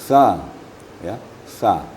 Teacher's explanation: sa desisnya hampir tidak ada tapi ada sedikit mahmusnya atau hamasnya tapi tidak berdesir